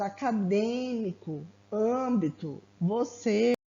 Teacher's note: O acento circunflexo, né, conhecido pelo acento do vovô, ele indica que essa pronúncia ela vai ser mais fechada, né? Ou até mesmo mais anasalada.